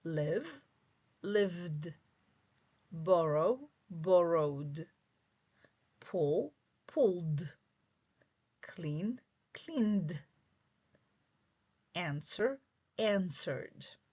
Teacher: In the second column, your ed will have a strong sound, d. And we actually will hear this d after voiced sounds. Voiced sounds produce vibration in your voice cord.